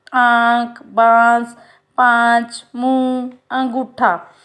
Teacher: जब चंद्र बिंदु आ जाते हैं तो ये अनुनासिक कहलाते हैं. और इसका उच्चारण मुंह और नाक दोनों से होता है